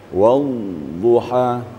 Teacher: mirip dengan rakhawah ya wuha suara tidak terputus tapi ada panjangan suara sedikit